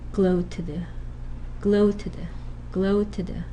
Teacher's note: a schwa gets inserted between a minus nasal plus alveolar minus continuant and another minus nasal plus alveolar minus continuant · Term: schwa insertion